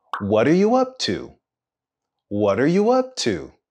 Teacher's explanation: We have a falling intonation at the end.